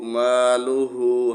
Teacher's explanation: ہا کو 1 الف کے برابر کھینچ کر پڑھیں گے